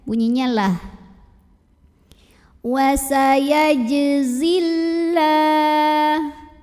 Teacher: Lam pada lafaz Allah dibaca secara tarqiq karena huruf sebelumnya yang zai barisnya di bawah kasrah. Bacanya tipis, data lidah belakangnya ya.